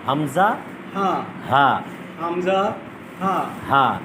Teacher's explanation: 17টা মাখরাজের প্রথম মাখরাজ কি? হামজা হা। এটা উচ্চারণ হবে কোথেকে? কণ্ঠনালীর শুরু থেকে।